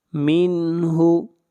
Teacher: نون ساکن کے بعد حروف حلقی میں سے ہا ہے، اظہار حلقی ہوگا